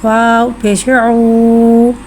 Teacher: वाव को होठों की गुलाई के साथ अदा करके पढ़ेंगे। वाव साकिन से पहले पेश आ रहा है, वाव मद्दा हो रहा है, लिहाजा वाव मद्दा को एक अलिफ यानी 2 हरकत के बराबर खींच के पढ़ेंगे।